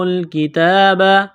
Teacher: نون کے اوپر کڑا زبر ہے، ایک الف کے برابر کھینچنا ہے۔ کاف اور تا کو باریک کرنا ہے